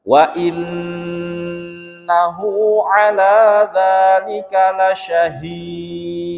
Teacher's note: Nah, yang perlu diperhatikan di sini adalah gunnah, kemudian dhammah terbalik atau mad silah qasirah, kemudian ala, la-nya itu fathah panjang, za juga fathah panjang, dibaca panjang satu ayunan atau dua harokat